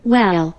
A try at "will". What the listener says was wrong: well이 아니고 will이라고 발음하면 돼요.